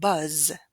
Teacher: The word buzz, on the other hand, has a voiced final sound, which means that its vowel will be lengthened. However, the final sound is not going to be aspirated because it is voiced.